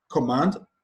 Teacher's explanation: the stress is placed on the second syllable